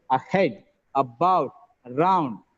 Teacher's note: the first ah is schwa sound is a weaker sound the next part is stressed